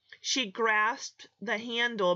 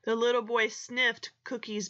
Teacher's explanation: there is no extra syllable because those are all unvoiced sounds